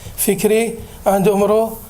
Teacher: the vowel between the K and R in fikir and the M and the R in umur is disappeared. So the morphological forms with vowels following such as fikri and umru allow the second consonant to resyllabify so that the cluster is not in a coda, so breaking the underlying coda cluster. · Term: epenthetic vowel